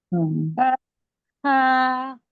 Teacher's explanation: জিম হা, বা হাটা হচ্ছে ও জিব্বার মধ্যে, সরি জিব্বা না, হচ্ছে গলার মধ্যে একটা চাপ সৃষ্টি করবেন, হলকের মাঝখান থেকে আসে, হ্যাঁ গলার মাঝখান থেকে আসে হা উচ্চারণটা। তো গলার মধ্যে একটা চাপ সৃষ্টি করবেন, চাপ সৃষ্টি করে একটা বাতাস বের করবেন, হ্যাঁ।